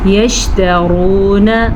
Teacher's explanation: را کو پر پڑھ لیجیے گا، را کے اوپر پیش کی وجہ سے